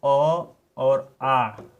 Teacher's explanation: अ और आ, जो आपके दोनों ये वर्ण हैं, दोनों स्वरों का उच्चारण कंठ से होता है। क्योंकि आप सुने भी होंगे अकु विसर्जनीय नाम कंठ, तो अकु विसर्जनीय नाम कंठ से अ और आ के जो भी भेद होते हैं सबका उच्चारण आपका कंठ से होता है।